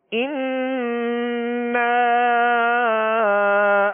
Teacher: یہ نون مشدد ہے، اس نون پر کیا کریں گے؟ غنہ کریں گے، ایک الف کی مقدار غنہ کریں گے، اور اس کے ساتھ الف مدہ، اور الف مدہ کے بعد حمزہ دوسرے کلمے میں آ رہا ہے۔